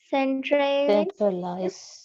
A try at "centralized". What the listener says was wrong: Okay, this word is centralized. Remember, yes, when the ED at the end, you also need to read it clearly. So centralized.